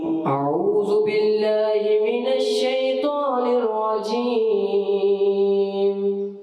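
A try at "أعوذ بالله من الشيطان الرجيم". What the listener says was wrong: صحیح بھائی، دال کی ادائیگی آپ نے کلیئر رکھنی ہے، دال، ٹھیک ہے.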